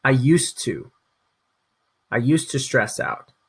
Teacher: But we don't say the D, we actually go to the T in our pronunciation. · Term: without the d